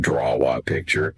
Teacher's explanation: A little W often sneaks in there between draw and A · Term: intrusion